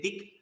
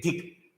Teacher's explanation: Dik uses Alpa Prana, Dik uses Mahaprana.